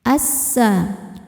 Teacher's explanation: Sebab alif lam menghadapi huruf syamsiyah yaitu sin. Maka alif lam tidak dibaca masuk langsung ke sin. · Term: alif lam syamsiyah